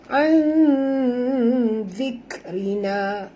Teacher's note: kita kena sembunyikan bunyi nun ini pada kadar separuh ke dalam huruf zal disertai dengung ikhfa hakiki